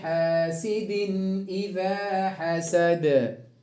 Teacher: حاسد إذا تنوين بالكسر بعده الهمزة إظهار حلقي